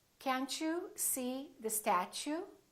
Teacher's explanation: when the t is followed by a you it becomes chu